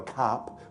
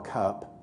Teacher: 50 years ago, cup, with a very open ah, and now it's more cup, with a more centralized quality